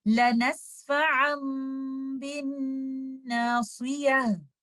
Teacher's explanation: We will join our lips, close them in a way as if they are just going to open at letter ba. We will hold the gunna of letter meme for some time